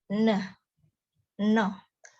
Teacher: Oral passage is blocked by pressing tongue tip against the alveolar ridge. It is alveolar.